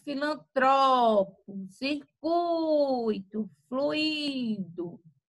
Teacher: Então, quando você for falar essas palavras, elas vão ter aí a penúltima sílaba mais forte. A sílaba tônica, ela vai ser a penúltima.